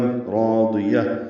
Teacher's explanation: پر ہے، ضاد بھی پر ہے، ضاد کو جلدی پڑھنا ہے، را الف مدہ 2 حرکات لمبا ہے، مد اصلی ہے ، یا کو تا مربوطہ سے ملا دینا ہے وقفاً، راضیہ، · تا کو را سے ملا دیں گے، را الف مدہ ہے، را بھی پر ہے اور الف مدہ بھی پر ہے، ضاد بھی پر ہے